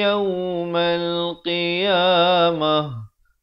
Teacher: Ta marbutah ditukarkan kepada bunyi ha.